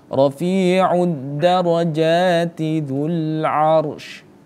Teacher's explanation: ro-nya terbaca, tafkhimnya ada, karena dia ini ro-nya didahului oleh harokat huruf yang berharokat fathah, maka dia harus dibaca tebal, tafkhim